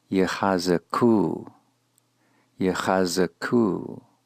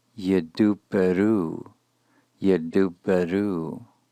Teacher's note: Notice in particular which consonant has a dagesh in it, followed by a shava, and as you hear it pronounced, you will be able to hear that shava as a weak, but a distinct vowel